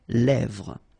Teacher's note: this E accent grave here, it gives you the E, really open sound. Lèvres.